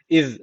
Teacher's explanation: Peltek olması önemli Çünkü bunu Peltek yapmazsanız arkadaşlar düz normal Z derseniz o zaman Keskin başka bir harf okumuş oluyorsunuz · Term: Peltek Z